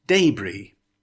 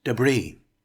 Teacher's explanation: It's pronounced DAY-bree with the emphasis on the first syllable. In option two the emphasis is on the second syllable.